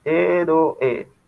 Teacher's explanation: Acá se está formando el hiato entre la O y la E.